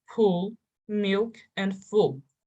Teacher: this is called clear l for example leaf black and loose when l precedes a consonant or occurs at the end of a word you pronounce it with the back of your tongue and this is called dark l